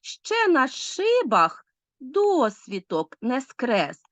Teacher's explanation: такі слова як ще і на ось такі тобто частки сполучники прийменники ненаголошуються зазвичай